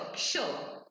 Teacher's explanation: बोलते वक्त भी समझ में आता है इट्स अ मिक्सचर ऑफ क और श. क्ष. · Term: ksha